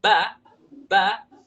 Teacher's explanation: ketika saya katakan ba ba di situ ada sedikit Alif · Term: harakat fathah